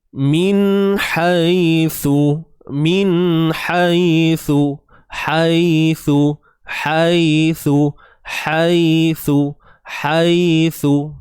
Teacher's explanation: Ha sempitkan tengah kerongkong kita.